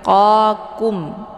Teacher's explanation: Jadi satu tebal, yang satu tipis. Qa letaknya di pangkal lidah, kemudian kum agak sedikit turun ke bawah. Jadi qa-nya tebal, kumnya tipis ya.